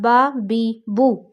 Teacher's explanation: با ادا ہوتا ہے دونوں ہونٹوں کے گیلے حصے سے، تو آپ کو پروناؤنسیشن سیکھنی ہے نا، تو آپ نے آپس میں ہونٹوں کا گیلا حصہ جو ہے وہ آپس میں ملانا ہے۔